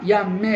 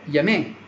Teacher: con una M sola in giapponese, non è raddoppiata. Un altro libro ancora, per dire yasumi, riposo, c'era scritto Yasmin, quasi fosse il nome esotico di una bella fanciulla.